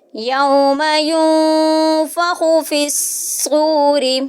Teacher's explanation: نون ساکن کے بعد فا اخفا ہو رہا ہے، یہاں پہ بھی ناک میں آواز کو چھپائیں گے ، خوا کو موٹا کریں گے، فا کو صاد کے ساتھ